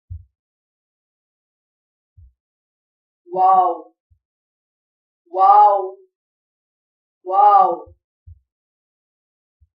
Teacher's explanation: منہ کے خالی حصے کی ہوا اور دونوں ہونٹوں کو گول کر کے واو ادا ہوتا ہے